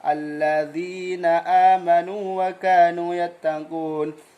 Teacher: Waw mad bertemu waw, ya mad bertemu ya, keduanya harus dibaca idhar dengan dibaca panjang.